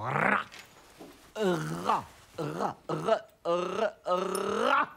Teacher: en portant le bout de la langue jusqu'au haut du palais, de sorte qu'étant frôlée par l'air qui sort avec force, elle lui cède et revient toujours au même endroit, faisant une manière de tremblement